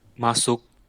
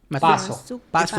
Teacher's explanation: m and p are both bilabial sounds. They are both articulated with your lips together, so it would be easy for one sound to gradually change into the other.